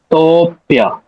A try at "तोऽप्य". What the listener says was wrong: हाँ, तो को थोड़ा लेंदी करो, दीर्घ करो। तोप्य, मतलब तो आप ऊपर ले जा रहे हैं, जस्ट कमिंग डाउन। तोप्य।